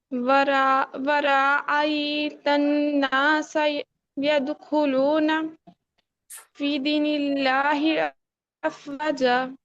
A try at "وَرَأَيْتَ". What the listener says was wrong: وہاں کو لمبا نہیں کرنا. ورأیت، ٹھیک ہے؟